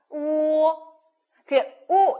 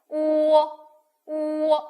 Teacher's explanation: 입 모양은 변함없는데 오어가 동시에 발음되는 거예요. 오어 이렇게 가시면 되겠습니다.